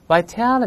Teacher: 这个字母▁t▁会轻轻浊化